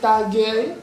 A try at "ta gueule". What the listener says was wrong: Ta gueule. Ta gueule. Ta gueule. Ta gueule.